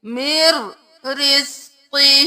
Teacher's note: یہاں پر ادغام بلا غنہ ہو رہا ہے، یہاں پر ہم غنہ نہیں کریں گے، میم کو ڈائریکٹ را کے ساتھ پڑھیں گے